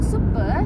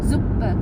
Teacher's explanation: kalau huruf S di setiap awal suku kata itu dia dibacanya tuh bukan sebagai S, tapi dia dibacanya Z